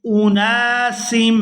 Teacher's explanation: یہاں نون کے ساتھ الف مدہ ہے تو اس کو کھینچ کر ادا کریں گے